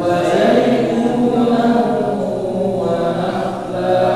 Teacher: Tanwin bertemu dengan waw lagi jadi didengungkan ya.